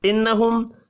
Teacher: نون مشدد پر غنہ کریں گے. میم ساکن کے بعد ہا ہے اظہار شفی ہوگا.